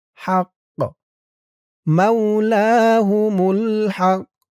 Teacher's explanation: কফটা কলকলার হরফ হয়ে গেছে, একটু ধাক্কা খাবে।